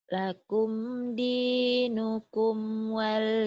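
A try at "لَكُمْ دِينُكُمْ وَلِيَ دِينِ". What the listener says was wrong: jangan ditahan. Lakum dinukum waliyadin. Waliyadin jangan ditahan karena nggak ada tasjid, nggak ada sukun, nggak ada tasjid. Jadi jalannya mulus aja gitu. Kayak jalan, kalau kasur kan ada pernya membal. Ini nggak ada apa-apanya gitu.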